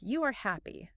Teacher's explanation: Sometimes you hear people saying things like, You are happy, with just a rising intonation.